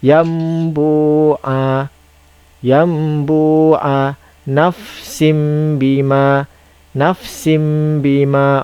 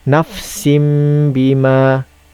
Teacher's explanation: tanwin bertemu dengan ba, dia akan ditukarkan bunyinya menjadi mim. Jadi kita baca nafsim bima. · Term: iqlab